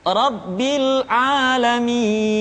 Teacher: diikuti oleh huruf sukun atau disukunkan contoh bisa di akhir-akhir kalimat robbil alamin jadi dibaca panjang Karena kita menemukan huruf sukun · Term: tanda panjang